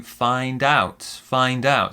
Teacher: and we stress the second syllable